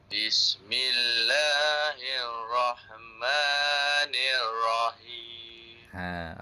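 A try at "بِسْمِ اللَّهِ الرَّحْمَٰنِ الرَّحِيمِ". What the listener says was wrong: Ada setengah tu pelajar-pelajar manji lah. Saya baca Bismillahirrahmanirrahim. Dia tak tekan kat ra tu. Jadi baca tekan betul dah. Cuma nak bagi an-nabr lekukkan tu ada sedikit lagi. Hirrah. Macam tu.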